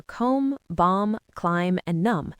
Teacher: This is less about academic history and more about the physics of speaking. The M and B sounds are both made by closing your lips. It's much easier to just end on the M sound and not release the B.